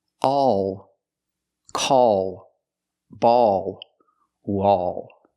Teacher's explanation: the tongue is tensed and raises up a little bit in the back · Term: dark L